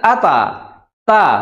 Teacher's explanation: huruf ta dia makhrjnya di ujung lidah bertemu dengan pangkal gigi seri atas